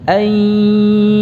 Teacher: Suaranya yang dominan justru yang dari khayshum, ya. Jadi dengungnya tampakkan dengungnya. Adapun suara dari mulut untuk ya-nya, ya, itu biasa saja. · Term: idgham bi gunnah